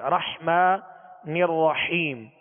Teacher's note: 2 حا ہیں، رحمن الرحیم، حا کو وسط حلق سے پڑھیں گے